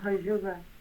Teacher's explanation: in Abzakh dialect it's hajira, so with fricative instead of affricate